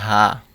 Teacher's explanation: বড় হা হচ্ছে হলকের শেষ হইতে উচ্চারণ করি